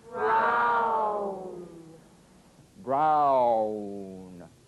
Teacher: if you move quickly from the widest to the smallest opening, ow, as in brown.